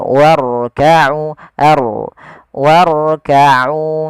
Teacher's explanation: jangan sampai huruf ra itu takrirnya berulang kali